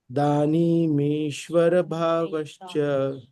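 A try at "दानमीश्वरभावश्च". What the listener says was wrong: दान है दान, not दानी. दान ईश्वर.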